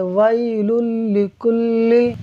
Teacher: یعنی ہم لام کو لام سے ملا کر بغیر غنہ کیے پڑھیں گے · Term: ادغام